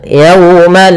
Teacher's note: ada waw sukun didahului dengan fathah, maka ini bacaan lin yang dimana kita lembutkan dalam melafalkannya